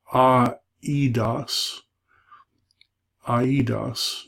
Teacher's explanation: Eidos is how you'd be tempted to read it, but they're saying because those two little marks, read them as separate vowels